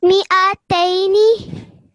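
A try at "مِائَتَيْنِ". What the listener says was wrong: Make sure you stretch the tay sound out for a bit longer, okay? Mi'ataini.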